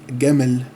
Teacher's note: Jim is pronounced as Gim with a G sound, so Jamal becomes Gamal